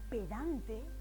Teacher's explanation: esa intensidad ese acento está en dan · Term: acento prosódico